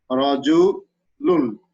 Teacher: one nun sakin remains hidden in its tanwin, which is expressed at the time of pronunciation